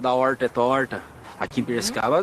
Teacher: esse é o r retroflexo o popular r caipira